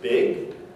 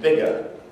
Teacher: initial b and the final g as compared with bigger and the g in the middle there will have voicing throughout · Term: full voices